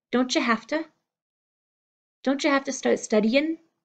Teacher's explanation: don't you pulling together into the dontcha have to be coming hafta don't you have to don't you